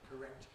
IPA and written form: kəˈrekt (correct)